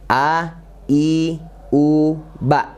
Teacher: huruf hamzah, yaitu makronya di pangkal tenggorokan ya, dan sifatnya tipis ya, mudah dan mirip dengan bahasa Indonesia huruf a ya, a, i, u, ba.